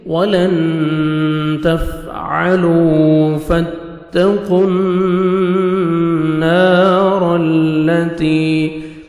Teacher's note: وَلَن تَفْعَلُوا فَاتَّقُوا النَّارَ الَّتِي، تا کو باریک پڑھیں گے، فتح، قوف کو موٹا کر کے پڑھیں گے، نون مشدد غنہ کریں گے، الف مدہ 1 سیکنڈ آپ نے نون کو کھینچنا ہے، را کو مرزبر ہے، را کو موٹا کر کے پڑھیں گے، تا کو باریک پڑھیں گے اور یا مدہ 1 سیکنڈ آپ نے تا کو کھینچنا ہے۔